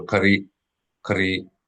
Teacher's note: It's a breaking sound, what they call a glottal stop.